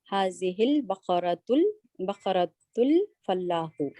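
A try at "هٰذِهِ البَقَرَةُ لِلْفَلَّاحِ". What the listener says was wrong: इसको नहीं जोड़ना, ये अलग है। हाजी हिल बकरतु अलग है, ये मुब्तदा है, उसको जोड़ने की नहीं है। उसके खबर के साथ जोड़ने की जरूरत नहीं है।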